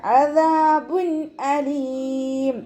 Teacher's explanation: തെൻവീനിന് ശേഷം ഇവഹാറിൻ്റെ ലെറ്ററായിട്ടുള്ള ഹംസയാണ് വന്നിട്ടുള്ളത്. തെൻവീനിലുള്ള നൂനിൻ്റെ സൗണ്ടിനെ വ്യക്തമായിട്ട് ഉച്ചരിക്കുക, മണിക്കാതെ ഉച്ചരിക്കുക.